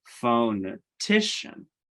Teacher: the the primary stress is actually on t phonetician um but there is a secondary stress at the beginning of the word phonetician